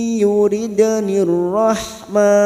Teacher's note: dal sukun qalqalah sugroh yang mati asli di tengah kalimat jangan lupa dipantulkan.